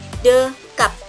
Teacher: bunyi p akan menjadi bunyi tak lepas dan klosifnya akan hilang apabila bunyi b menempati posisi koda atau akhir suku kata, pada contohnya dekap.